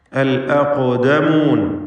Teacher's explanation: ഇതിലുള്ള ഖാഫിൻ്റെ സുക്കൂൻ ഖൽഖല സുഗ്റ നൽകി ശബ്ദം ഹറക്കത്ത് പോലെ ചലിപ്പിച്ച് വ്യക്തമാക്കി ഉച്ചരിക്കണം. വആബാഉകുമുൽ അഖ്ദമൂൻ, ഖാഫിന് തഫ്ഖീമും കൊടുക്കണം.